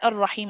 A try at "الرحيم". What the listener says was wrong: So you're saying ar-rah, and then I'm starting to do the ha, right? So finish the ra, الرحيم. الرحيم.